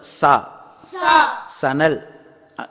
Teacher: அடுத்தது சா என்பது தமிழில் சானா மாதிரி சம்மதம், சடை, சாலை சொல்கிறோம்ல, அது மாதிரி அந்த சா. நாவுடைய நுனிநாவின் மேல் பகுதி மேல் கீழ் பற்களின் இடையில் இணையும் போது உண்டாகும் சா. சொல்லுங்க சா.